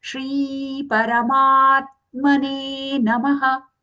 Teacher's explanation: So here Shri. Okay, it's not Sri, not the Sakara, not the dental Sa, but the palatal Sha has to come.